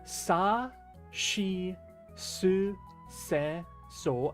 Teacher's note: these are unvoiced. So you're not doing anything. Your voice isn't vibrating.